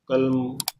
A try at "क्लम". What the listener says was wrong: चौथे वाले में आधा का और लामा पूरे, क्लम क्लम क्लम।